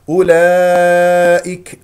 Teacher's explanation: الهمزه مضمومه نضم الشفتين فيها · مد واجب متصل بمقدار اربع او خمس حركات